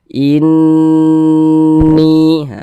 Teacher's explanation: panjangnya gunah itu dua harakat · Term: gunah musyaddadah